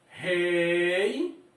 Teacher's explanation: Esse I também está aqui como um semivogal, então Y.